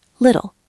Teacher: The T is between I and L. So it becomes a soft D.